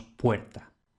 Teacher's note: de O breve latina vamos a tener O abierta, que en español casi siempre va a resultar en un diptongo ue